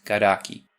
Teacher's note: Brazilian Portuguese often inserts a dummy vowel /i/ · native Portuguese words never end in a k sound, so to make something like karak easier to pronounce, Brazilian Portuguese often inserts a dummy vowel e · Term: epenthesis